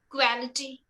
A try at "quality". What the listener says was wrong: So it's KWO. The pronunciation is KWO. Quality. So you're saying qua. The A is not there. Just imagine the A is not there. KWOL. Quality.